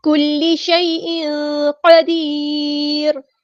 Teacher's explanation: کلی لام تشدید والا تو اچھے سے جماؤں کے ساتھ ادا کرنا ہے ، کاف باریک لام بھی باریک، یا